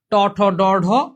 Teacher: ট ঠ ড ঢ, এগুলো সব মূর্ধা থেকে উচ্চারিত হয় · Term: মূর্ধা বর্ণ